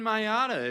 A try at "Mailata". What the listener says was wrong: Just forget the L in Mailata. Like Miata, like a car. Mailata.